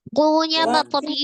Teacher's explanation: pengucapan huruf wau dengan memajukan kedua bibir